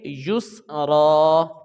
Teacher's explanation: یا کو سین کے ساتھ ملائیں گے، اس کی آواز گول ہو جائے گی، گول آواز کے ساتھ ہم سین کو ملائیں گے تو یہ غیر قلقلہ ہے، تو یہاں پہ ہم وقف کریں گے۔